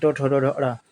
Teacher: री का उच्चारण स्थान है मूर्धा।